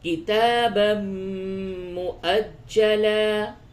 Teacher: تنوین کے بعد میم ہے، ادغام مع الغنہ ہوگا